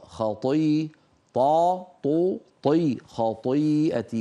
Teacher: وفخم الطاء وفخم الخاء